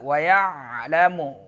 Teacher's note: عین آ گیا درمیان حلق سے